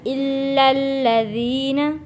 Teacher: فبشرہم بعذاب علیم الا الذین آمنوا، الا الذین، یہاں پہ لام کے اوپر تشدید ہے، پھر یہ لام جڑے گا لذی والے لام کے ساتھ، الا الذین لام جڑے گا لام کے ساتھ، کیونکہ اس کے ساتھ یہ جو الف لکھا ہے لام الف یہ نہیں پڑھا جائے گا کیونکہ اس کے اوپر کسی قسم کی کوئی حرکت نہیں ہے۔